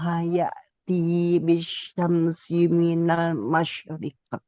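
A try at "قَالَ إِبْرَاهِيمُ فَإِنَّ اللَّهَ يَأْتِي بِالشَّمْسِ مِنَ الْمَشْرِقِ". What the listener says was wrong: Haknya jangan terlalu ditekan. Hahihu Ibrahim, jangan Ibrahim. Nah, karena huruf H itu dia punya sifat namanya khafa atau samar lirih dalam pengucapan. Qala Ibrahim fa innallah. Nah, fa innallah. Jadi dari nun langsung ke L, lam ya. Fa innallah ya'ti.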